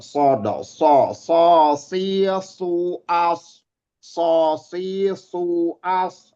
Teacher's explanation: Dia punya sifat isti'la atau mengangkatnya anak lidah ke langit-langit atas. Nama sifatnya isti'la, mengangkat.